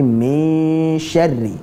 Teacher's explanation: ikhfa, bersiap-siap ke makhraj huruf setelahnya, shin. Jadi jangan ming, tapi min syarri, dan ro-nya tipis.